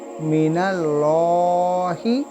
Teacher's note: जब भी अल्लाह का नाम आता है अल्लाह, इस लाम के आगे जो लेटर है अगर इस पे हरकत ज़बर की है, पेश की है, तो इस अल्लाह ताला का इस्म है लाम, इस लाम को मोटा पढ़ना होगा